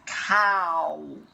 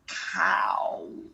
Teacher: it's a really wide mouth, cow, but all the time the sound's coming at the front.